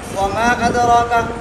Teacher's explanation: یہاں پر مد منفصل ہے, دونوں راویوں کے لیے قصر ہے